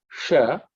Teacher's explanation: the tongue has to bend backwards and say sha